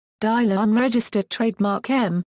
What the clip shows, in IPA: daˈləm